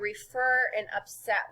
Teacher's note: Look how the accent in upset is at the end, refer is at the end. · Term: accented